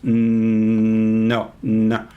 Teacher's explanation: you hold it but you don't release it it's not explosive you let the air out through your nose no no okay a lot of languages have nasal vowels even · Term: nasal sounds